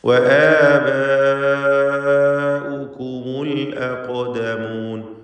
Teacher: ഖാഫിന് തഫ്ഖീമും കൊടുക്കണം. ഇസ്തിഅലാഇൻ്റെ ഹർഫ് കൂടിയാണ്